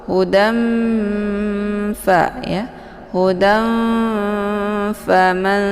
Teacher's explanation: Nun letak posisinya di ujung lidah ya, sementara fa letak posisinya di syafatain 2 bibir ya. Jadi saat membaca itu tanwinnya itu disamarkan ya. Seperti mau siap-siap masuk ke huruf fa. · Makharijul huruf nun dengan makharijul huruf fa itu tidak begitu dekat juga tidak begitu jauh ya. Nun letak posisinya di ujung lidah ya, sementara fa letak posisinya di syafatain 2 bibir ya. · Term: ikhfa awsat